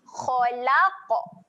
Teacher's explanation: Lantunkan sikit bunyi huruf qaf tu.